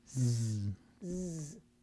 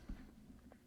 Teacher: a long sound now switch and make a z sound z you can feel your larynx vibrate on z but not on s